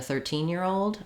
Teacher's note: If I'm saying a 13-year-old, you can hear I'm stressing on teen.